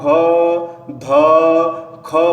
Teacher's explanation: यदि आपको घ ध ख बोलना हो तो देखो इसमें बहुत ज्यादा ऑक्सीजन बाहर निकल रहा है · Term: महाप्राण